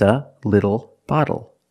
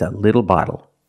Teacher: phonetically the t is between vowels and for this reason the T changes to a fast D in American pronunciation